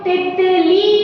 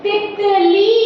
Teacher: जब थोड़ी देर के लिए बोला जा रहा है तो छोटी ई की मात्रा है, ती त ली, ऐसे पढ़ना है, ठीक है, तितली, ठीक है।